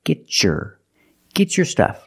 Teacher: I can change the T to a CH sound like chicken